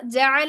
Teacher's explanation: عین وسط اور حلق سے ادا ہوگا